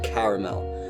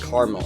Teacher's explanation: Midwest pronounce it with two syllables